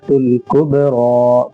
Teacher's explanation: کبرى با میں قلقلہ ہوگا